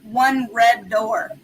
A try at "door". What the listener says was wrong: You were so southern when you just said door. You said door with 2 syllables. You said it like that alcohol, door's whiskey.